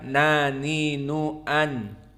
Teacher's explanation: Tarful lisan, ujung lisan kita dengan al-hanak al-a'la, dari gusi yang ada di atas gigi seri kita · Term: nun